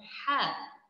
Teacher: makhraj tempat keluar huruf ha adalah bahagian kerongkong tapi bahagian tengah kerongkong